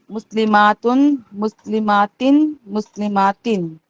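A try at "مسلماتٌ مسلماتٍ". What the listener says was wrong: थोड़ा और इसको ऐसा घसीटो ताकि ऐसा समझ में आए। मुस्लिमातुन मुस्लिमातिन। इसमें ज्यादा फर्क नहीं है, अलिफ का है, तो इसके लिए इसको हमेशा मुस्लिमतुन करके पढ़ो।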